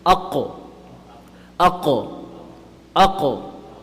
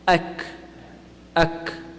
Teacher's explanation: You'll notice that the qaf comes a little bit lower and the kaf comes a little bit higher. Kaf is a little bit more towards the front of the mouth.